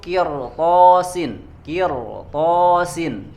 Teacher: Sukun sebelumnya kasroh tapi karena setelahnya huruf isti'la tetap maka harus dibacanya tebal